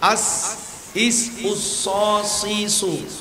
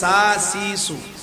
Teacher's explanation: সাদ মোটা করে সিন পাতলা করে